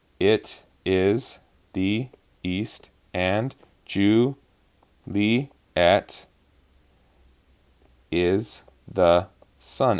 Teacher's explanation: it finishes on an unstressed beat, which isn't normal